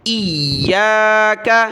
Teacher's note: یا کو سخت کریں گے تشدید کی وجہ سے